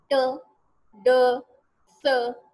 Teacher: हमारी जो जबान है वो उठती है और एल्वियोलर रिज पे या दांतों के ऊपर के हिस्से पे जाके लगती है